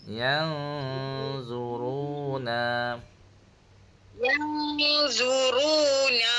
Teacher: yang bunyi N dulu, lepas tu baru bunyi G. Yang sengau sikit.